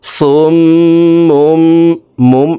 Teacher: দেখুন হরকতের বামে মিমের উপরে তাসদিদ আছে, এই কারণে এই পেশওয়ালা শর্টটি তাসদিদওয়ালা মিমের সাথে 3 সেকেন্ড পরিমাণ গুন্নাহ করে পড়ব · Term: ওয়াজিব গুন্না